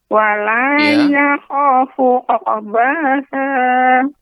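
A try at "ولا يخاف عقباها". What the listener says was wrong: Ya, tidak terlalu cepat Nek untuk uqu ya, tidak tapi uqba cukup dengan dipantulkan. Wala yakhafu uqbaha. Jadi koreksiannya huruf qalqalah pada huruf qaf ya. Kemudian ada beberapa huruf yang seharusnya pendek tapi tadi Nenek baca panjang. Semoga ke depan bacanya menjadi lebih baik ya, lebih fokus lagi, terutama huruf-hurufnya sebagian yang seharusnya dibaca pendek ya, jangan sampai dibaca panjang. Atau kebalikannya.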